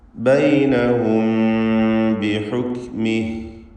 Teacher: ബൈനഹും എന്ന പദത്തിൽ സക്കിനത്തായ മീമും ശേഷം ബാവുമാണ് വരുന്നത്. ഇഖ്ഫ ഷഫവി നൽകി മീമിനെ അവ്യക്തമാക്കി മണിക്കണം.